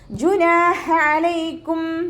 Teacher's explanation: നൂനിൻ്റെ കൂടെ അലിഫ് മദ് വന്നു, അവിടെയും നമ്മൾ 2 കൗണ്ട് മാത്രം നീട്ടി കൊടുക്കുക. ഹ അക്ഷരത്തിൻ്റെ സൗണ്ടിനെ തൊണ്ടയുടെ മധ്യഭാഗത്തു നിന്ന് കൊണ്ടുവരിക. ഐനിൻ്റെ സൗണ്ടിനെയും നമ്മൾ തൊണ്ടയുടെ മധ്യഭാഗത്ത് തന്നെയാണ് കൊണ്ടുവരേണ്ടത്.